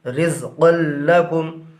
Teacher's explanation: رزقا لکم، را زا زیر رز، قاف لام دو زبر قل، رزقل، لام زبر لا، رزقل، کاف میم پیش کم، رزقل لکم۔ یہاں پر بھی دو زبر کے بعد حروف یرملونہ میں سے لام آ رہا ہے، لہٰذا یہاں پر بھی ادغام بلا غنہ ہوگا، یعنی قاف کو لام سے ملا کر پڑھیں گے۔